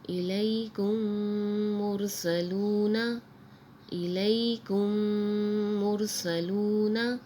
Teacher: اگلا لفظ ہے إِلَيْكُمْ مُرْسَلُونَ، إِلَيْكُمْ مُرْسَلُونَ، آگے وقف إِلَيْكُمْ مُرْسَلُونَ۔ یہاں میم ساکن کے بعد دوسری میم آ رہی ہے تو یہاں غنہ ہو رہا ہے